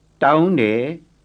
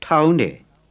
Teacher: Plain T first, aspirated second.